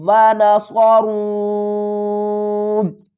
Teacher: کیونکہ واو کے اوپر مد ہے تو اس کو ہم کھینچ کر پڑھیں گے۔ را واو مد پیش رو، الف کو نہیں پڑھیں گے، ونصرون۔